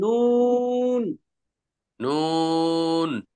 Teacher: জিহ্বার আগা তার বরাবর উপরে তালুর সঙ্গে লাগাইয়া নুন। নুন দেখেন নুন বললে জিহ্বার আগাটা উপরে তালুর সঙ্গে লাগা যায়